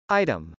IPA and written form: ˈaɪtəm (item)